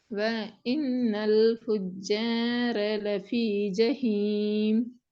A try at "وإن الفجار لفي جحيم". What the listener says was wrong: ராகம் போதாது. فجار ரெண்டு கிட்ட தேவையில்லை. நீங்க அதுல ஒரு செகண்ட் நிடினா போதும்.